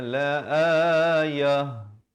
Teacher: Ini kalau kita waqaf jadi bunyinya la ayah. Ta marbutah ditukarkan kepada bunyi ha dan diberikan tanda baris mati mendatang